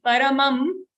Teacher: Only that is the half ma. Paramam, the anuswar ma will be half.